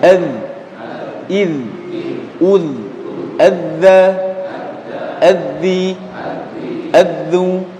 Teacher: tempat keluar ketiga huruf ini di punggung ujung lidah ya, ditemukan dengan ujung gigi seri bagian atas. Nah, jadi ujung lidahnya muncul sedikit ketika mengucapkan tiga huruf ini.